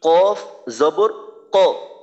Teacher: জবর কফ কফ জবর কফ যেন বাংলা ক মতো না হয় বাংলা ক থেকে কফের মাখরাজটা একটু পিছনে একটু নিচের দিকে